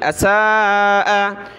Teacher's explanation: سین کو کھینچنا حمزہ کو نہیں